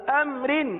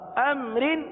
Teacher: آگے رجال، را کے نیچے زیر ہے اس لیے را کو باریک پڑھا، ہم نے اس کی ادائیگی بھی باریکی کی، رجال۔ آگے امر، را کے نیچے دو زیر کی تنوین ہے اس لیے ہم نے را کو باریک پڑھا